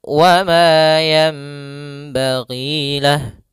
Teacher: Ada pada lafal ma di sini ada mad tabi'i, yaitu fathah bertemu alif. Panjangnya 2 harokat, mad tabi'i. Kemudian pada lafal yanbaghi lah ada hukum tajwid berupa bacaan iqlab, yaitu adanya nun sukun bertemu dengan huruf ba.